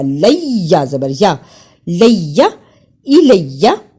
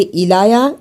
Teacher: اسی طرح الیہ، یہاں الف کے نیچے زیر ہے، اسے پڑھتے ہیں حمزہ زیر ای. لام کو یا سے ملانا ہے اس لیے کہ یا پر شد ہے